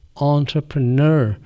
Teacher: اب انٹرپرینور میں یا انٹرپرینر میں جو شروع کا آن میں بول رہا ہوں، یہ نہ تو او ہے نہ تو آ ہے، یہ آ اور او کے درمیان کا ساؤنڈ ہے انٹرپرینر. اور این کو اسٹریس کرنا ہے، زور دینا ہے